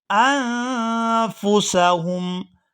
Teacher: یہاں حمزہ کو نون ساکن کے ساتھ ملائیں گے تو اخفا کریں گے